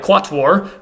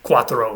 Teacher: And so in a word like quatuor, which was the Latin word for four, the number 4, that w after the q that spelled u stayed the sound w. It didn't evolve into qua something, it stayed qua. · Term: w sound